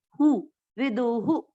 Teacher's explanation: विसर्ग का उच्चारण उसके पिछले अक्षर की मात्रा पर डिपेंड करता है। यहाँ पर विदु यानी उ की मात्रा है तो विसर्ग को पढ़ेंगे हु